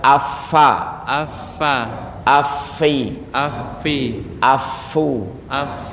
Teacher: ada angin yang keluar dari gigi affa bukan pakai mulut ada orang menggunakan mulut affa cuma ditiup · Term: huruf Fa